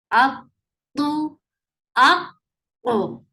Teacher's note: This is heavy and it is getting qalqala when you are giving waqf.